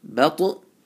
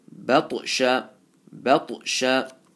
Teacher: ta is full mouth, and you have to make qalqala, and ba is empty mouth. So from empty mouth to full mouth, you have to blend it.